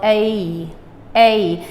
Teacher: you don't want to put that Y in the middle because we said the Khmer A does not have the Y. So A, and just try to get to the E as fast as you can.